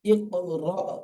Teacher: হামজা সাকিনকে ধাক্কা দিয়ে বা ঝাটকা দিয়ে উচ্চারণ করতে হয়।